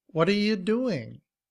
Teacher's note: What are becomes whata, whata. You becomes ya, ya.